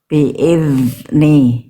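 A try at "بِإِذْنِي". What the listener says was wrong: Nah, itu kebocor di ujung biiz. Nggak boleh keluar nafas.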